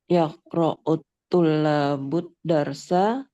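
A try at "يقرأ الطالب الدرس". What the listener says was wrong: طالب ليس طلاب طالب.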